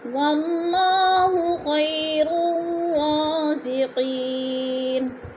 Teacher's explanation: خیر الرازقین خی پہ یالین ہے یا ساکن سے پہلے خواہ کے اوپر زبر ہے تو یالین کو لمبا بھی نہیں کرنا اور جھٹکا بھی نہیں دینا